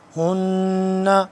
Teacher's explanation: ہن آخر پہ نون مشدد پہ غنہ